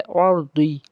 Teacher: रा साकिन के पीछे ज़बर होने की वजह से रा को हम पुर पढ़ेंगे